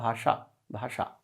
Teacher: तालु और दांत के बीच में मूर्धा एक अंग है, वहां पर अपनी जीभ को लगाना है, तब निकलेगा भाषा भाषा। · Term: मूर्धन्य शा